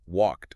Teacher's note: It is physically easier for the human mouth to just add an unvoiced T sound at the end.